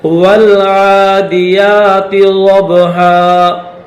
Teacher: واو کو لام کے ساتھ ملائیں گے، یہ الف نہیں پڑھا جائے گا۔ والعادیات ضبحا، ضاد با زبر ضب، با حروف قلقلہ میں سے ہے، اس کو ظاہر کر کے پڑھیں گے۔